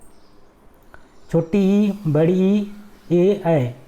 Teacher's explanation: जिन स्वरों के उच्चारण में जीभ का अग्र भाग काम करता है उन्हें हम कहते हैं अग्र स्वर। जैसे कि अगर हम देखते हैं छोटी ई, बड़ी ई, ए, ऐ, इसको अगर हम बोलेंगे तो हमारा कहीं ना कहीं जो जीभ का अगला भाग होता है वो काम करेगा।